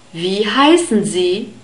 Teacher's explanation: is pronounced like the English V sound so it's a sound it's formed with the upper teeth and the lower lip